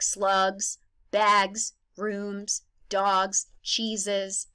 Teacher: we are going to suddenly change the S sound to a z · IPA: [z]